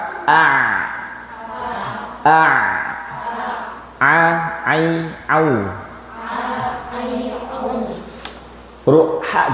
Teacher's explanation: ini huruf Ain dan huruf ha namanya pertengahan tenggorokan wasatul halqo